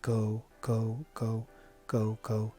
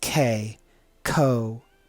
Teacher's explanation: in this case we have an unaspirated k sound